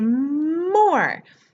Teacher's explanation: The other really good thing about more is that it has the bilabial M, which is a very visual sound